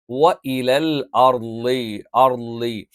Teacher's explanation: നാവിൻ്റെ സൈഡ് അല്ലെങ്കിൽ നാവിൻ്റെ വലതുഭാഗം അല്ലെങ്കിൽ ഇടതുഭാഗം, ആ ഭാഗത്തുള്ള അണപ്പല്ലിൽ ചേർത്ത് വെച്ചുകൊണ്ടാണ് നമ്മൾ ഉച്ചരിക്കാറുള്ളത്.